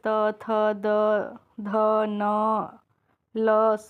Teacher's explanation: इनका उच्चारण स्थान क्या है, दांत है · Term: त वर्ग